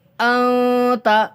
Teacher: انت منذر، دیکھیے نون ساکن کے بعد حروف اخفا کے 15 حروف میں سے تا آ رہا ہے، اس لیے یہاں پر نون ساکن کی آواز کو چھپا کر کے پڑھیں گے. ناک میں ایک الف کی مقدار